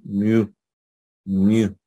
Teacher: Algunos la pronuncian, van a escuchar que la pronuncian como mu, como algo intermedio entre I y U